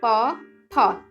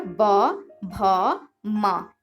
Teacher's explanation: प, फ, इसमें कोई कंपन नहीं निकल रहा है, ये आपका अघोष है।